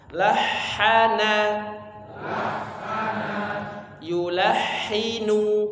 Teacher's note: Bersih ya, tidak ada suara getaran atau suara seperti ngorok ya, bukan yulahinu tapi lahana, yulahinu. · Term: huruf ha